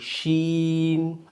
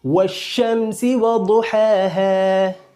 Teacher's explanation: طرف لسان مقابل کی اوپر کی تالو سے ملتی ہے تو شین ادا ہوتی ہے